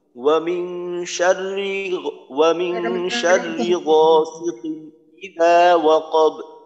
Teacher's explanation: ওয়ামিং শাররি যেন শাররি লম্বা না হয়, আর একটা হলো রা এখানে লম্বা করতে হবে যেন খাটো না হয়। ওয়ামিং শাররি গাসিকিন ইযা ওয়াকাব, ইযা ইযা ওয়াকাব।